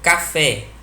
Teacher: A sílaba forte é fé e ela recebe acento no E.